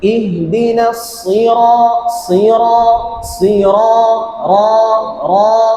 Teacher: যখন আমি এটাকে তাকরার করব, মানে উপরের তালুর সাথে লাগায় হালকা বাড়ি দিব।